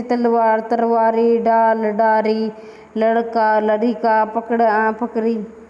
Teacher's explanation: अवधि में ल का ध्वनि प्राय र को हो जाती है, कभी कभी ड ध्वनि भी र हो जाती है